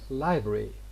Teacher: Okay, for example, in the word library, in the way it is written, library, but the way it is pronounced, normally it becomes library. So we have omitted the R and the vowel phoneme in it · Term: elision